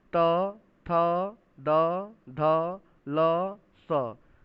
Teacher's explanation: फिर है त, थ, द, ध, ल, स, देखिए सब में जाके जीव जो है दांत से टकरा रहा है